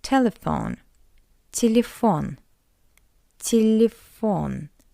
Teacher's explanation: In an unstressed position, we read it as a weak e